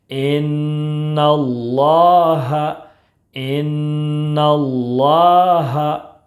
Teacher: نون مشدد ہے، اس لیے ایک الف کے برابر غنہ کریں گے۔